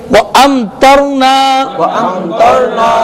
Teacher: یہاں میم ساکن کے بعد حرف تا آ رہا ہے، اس لیے یہاں پر اظہار شفوی ہوگا اور غنہ نہیں کریں گے